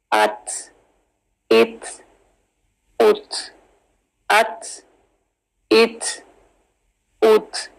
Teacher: ता जो है ये कलकला लेटर नहीं है, इसमें हम्स है